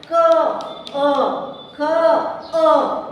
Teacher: For example क अ ख अ, यानी कि जैसे ही हम 33 व्यंजनों का उच्चारण करते हैं तो उनके उच्चारण के अंत में जो है कंठ से यानी कि स्वर यंत्र से अ की ध्वनि निकलती है। मतलब जो वर्ण उच्चारण करते समय स्वरों की सहायता से पूर्ण होते उन्हें व्यंजन कहते हैं।